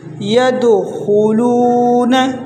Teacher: خا کو موٹا پڑھیں گے، اکثر لوگ اس کو باریک پڑھتے ہیں